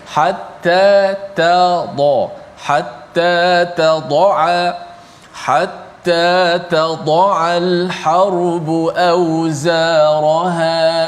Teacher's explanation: huruf ta di hujung lidah, huruf dad di bahagian tepi lidah, huruf ain di bahagian tengah halqum · So jangan kita tebalkan ta itu hatta tad'a. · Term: makhraj